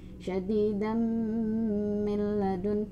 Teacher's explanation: idgham bi gunnah, dengan gunnah dimasukkan kemudian ditahan di hidung 2-3 ketukan